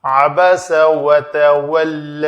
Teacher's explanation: عین کا مخرج وسط حلق